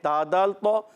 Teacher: تا کا مخرج زبان کا سرا اوپر کے دانتوں کی جڑوں سے، ثنایا اولیاء کی جڑیں، زبان کا سرا اوپر کے دانتوں کی جڑیں، یہ تا کا مخرج ہے۔ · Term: حروف نطعیہ